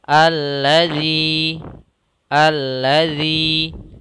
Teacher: didahului dengan harakat kasrah maka sama seperti ini yaitu Mad thi'i kita panjangkan untuk panjang Mad thi'i yaitu dua harakat